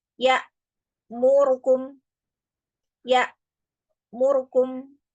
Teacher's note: Jadi ru-nya itu dibaca lebih pendek durasinya · pengucapan ro yang berharokat dhammah itu memendekkan durasinya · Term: ikhtilas